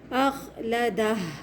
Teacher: آخر میں ہا کی آواز کو لمبا چلائیں گے